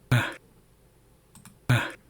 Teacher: you can also hear there's a little bit of a breath too right at after I say ah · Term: aspiration